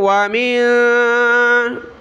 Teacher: نون ساکن کلرفل ہے، ناک میں آواز پیدا کریں گے